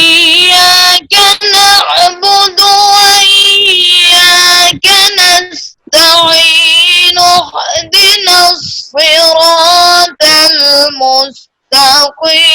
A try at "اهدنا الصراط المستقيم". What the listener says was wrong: آپ کا طا صحیح نہیں نکلا، پھر پڑھیے، زور سے بھی پڑھیے اور طا کو صحیح کیجیے. اہدنا الصراط طا پڑھیے پھر.